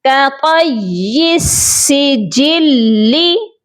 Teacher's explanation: جیم کو ہم نے لام کے ساتھ ملانا ہے، سختی کے ساتھ ملانا ہے. کَطَیِّ السِّجِلِّ.